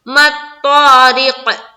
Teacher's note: اسی طرح جس طرح سے یہاں پر میں نے بتایا تھا، تو آپ کو منہ بھر کر نکالنا ہے اور الف مدہ کرنا ہے. ما الطارق، قاف میں قلقلہ آیت کی وجہ سے